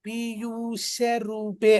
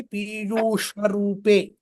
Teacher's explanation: ఇప్పుడు మనం పీయూష అంటున్నప్పుడు మూర్ధన్య షకారంతో మనం ఉచ్చారణ ప్రయత్నం చేస్తున్నాం. తాళవ్య షకారానికి ఇప్పుడు ఒకవేళ అక్కడ తాళవ్య షకారాన్ని ఉంటే గనక నేను పీయూష రూపే అని ఉండేవాడిని.